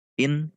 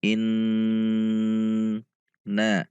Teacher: Nun tasydid in harus ada dengung karena ini bacaan ghunnah musyaddadah